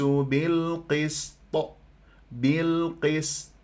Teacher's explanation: يختفي عندك الصفير بالقسط او انه تجعلها صاد بالقسط هذا غلط لابد ان تاتي بسين مرققه صفير رخا وهمس